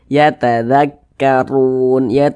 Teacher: Huruf ra yang memiliki tanda baca dhammah, maka huruf ra dibaca tabkhim, dibaca tebal, sehingga pangkalisan kita atau pangkal lidah kita itu naik terangkat ke atas ketika kita mengucapkannya, ditebalkan · Nah, ditebalkan, huruf ra-nya itu ditebalkan. Kemudian run ini dibaca panjang. Ini namanya adalah mad arid lisukun.